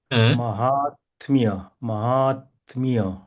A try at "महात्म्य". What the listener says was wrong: Correct.